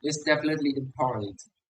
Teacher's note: The word it's is reduced. He doesn't really say a vowel. He just makes the TS sound.